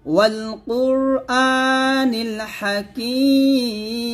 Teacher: এরকম আমার সাথে আবার বলেন, ইয়াসিন ওয়াল কুরআনিল হাকিম ওয়াল কুর কফ র পেশ কুর এখানে র সঙ্গে মোটা করবেন ওয়াল কুরআনিল আতে এক টান দিবেন